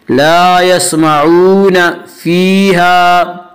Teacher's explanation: لا یسمعون فیہا، فیہا یا مدہ، یا مدہ وہ یا جو ساکن اس سے پہلے زیر ہو، یا مدہ کو ایک الف کے برابر کھینچ کر پڑھیں گے. فیہا الف مدہ، الف مدہ الف ہمیشہ مدہ ہوتا ہے، الف سے پہلے زبر ہوتا ہے، الف مدہ کو ایک الف کے برابر کھینچ کر پڑھیں گے.